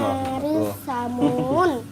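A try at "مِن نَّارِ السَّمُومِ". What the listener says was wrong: Samum, mim itu. Samum.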